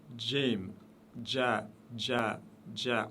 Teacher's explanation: Jim, toujours légère cette lettre, aucune exception. C'est le J de la langue française prononcé légèrement. Quand je dis le J avec un D devant le J.